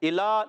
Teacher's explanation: اب یہاں پر حمزہ کو خوب واضح کریں گے، الا لام پر کھڑا زبر، ایک الف کھینچ کر ادا کریں گے۔